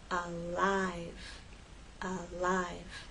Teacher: make the L with the tip of your tongue against the bump and as you move into I you need to drop your tongue and make the full I sound